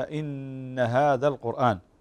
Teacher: طبعا نؤكد يا إخوة بارك الله فيكم عدة مرات على النون المشددة، والآن كذلك ستأتي معنا نون مشددة في هذه الكلمة إن هذا القرآن، فتغن بمقدار حركتين، تغن هذه النون هنا بمقدار حركتين